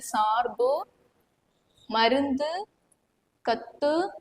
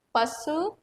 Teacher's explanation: ஒரு மாத்திரை அளவில் இருந்து அரை மாத்திரை அளவா வந்து குறுகி ஒலிக்கிறது தான் நம்ம என்ன சொல்லுவோம், குற்றியலுகரம்